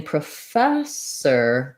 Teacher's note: It does in some other words like produce or program, but it's not stressed. So in professor, the fess syllable is stressed